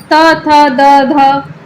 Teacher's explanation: त, थ, द, ध दंत से उच्चारित होने के कारण इन्हें दंत वर्ण भी कहते हैं।